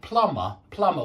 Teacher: whenever you've got an M before a b usually at the end of the word don't pronounce the b